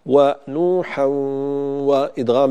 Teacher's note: وإدغام بغنة لا بد من بيان الغنة فيه بشكل جيد